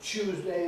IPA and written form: ˈʧuːzdeɪ (Tuesday)